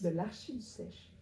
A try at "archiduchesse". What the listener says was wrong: Non, t'as dit du sèche. Duchesse. Che. Pas ce. che.